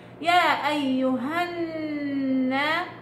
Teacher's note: تمام، يا أيها كل اقرأي بس لسانيا الخيشوم بيشتغل لحاله. الغنة مشددة، غنة المشدد كم أكمل ما تكون، يعني من 4 إلى 5 حركات تقريبا